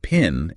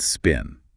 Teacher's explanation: in pin, there's this little puff of air after the P. And in spin, there isn't. That puff of air is what we call aspiration.